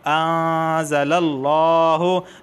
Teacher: نرم غنہ ہوگا، اخفا والا غنہ ہوگا، یعنی زبان کی نوک اوپر کے تالو سے نہیں لگے گی